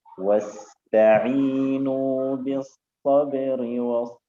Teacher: السين فيها حرف رخاوة، لا نريد أن يكون فيه استعلاء مع الهمس.